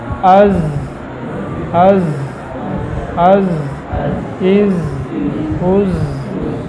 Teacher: زا کے اندر یہ جہر ہے تو وہ قوی ہے، تو قوی ہونے کی وجہ سے زا کے اندر اس سے کم ہوگا، ٹھیک ہے. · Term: صفت جہر